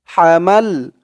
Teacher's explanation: আলিফ টান হামাল হা মাল মিম দিয়ে লাম ধরবে মাল হামাল হা উচ্চারণটা কিন্তু গলার ভেতর থেকে চিকন করে আনতে হবে